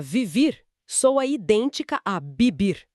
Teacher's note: É um som bilabial, suave.